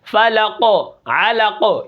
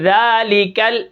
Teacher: قاف کو ہم کیا کریں گے، موٹا پڑھیں گے اور کاف کو باریک پڑھیں گے